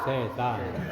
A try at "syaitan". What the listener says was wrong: syaitan. Jangan dipelesetkan jadi setan, jadi kurang ngeri dia. Syaitan. A'udzubillahi minasyaitonir rajim. Syaitan.